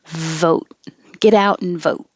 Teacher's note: And you don't release the T.